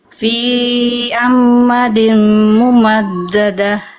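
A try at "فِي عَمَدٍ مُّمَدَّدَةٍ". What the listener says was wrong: Mungkin untuk sama yang seperti bunda-bunda yang sebelumnya, ketika tidak ada tanda mad maka bacanya pendek ya. Fi amadim mumaddadah. Nah, jadi banyak tadi mungkin ayah bunda bunda-bunda sebelumnya juga ya, yang dibacanya pendek harus pendek ya. Untuk yang dibacanya panjang itu yang ada tanda madnya saja ketika patah menghadapi alif.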